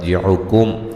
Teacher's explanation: کاف کو باریک میم ساکن کا اظہار ہے